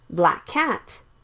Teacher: the same k sounds so you can skip one of the k sounds